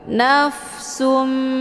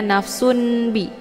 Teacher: bertemu dengan huruf ba ini dinamakan dengan hukum bacaan iqlab mana iqlab itu membalikkan dari bunyi tanwin menjadi kepada bunyi mim sukun